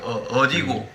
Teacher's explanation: 경상도는 그 뒷글자에 액센트를 줍니다.